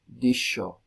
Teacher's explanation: También tenemos la fricativa prepalatal sorda, que se escribe con X, en palabras como dicho.